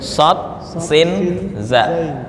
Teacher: sod makhraj itu bukan di bibir nggak ada kaitan sama sekali. Makhrajnya di lidah.